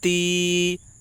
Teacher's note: یا ساکن سے پہلے زیر ہے اس لیے یا مدہ ہوگی، یا مدہ کو ایک الف کے برابر کھینچ کر پڑھیں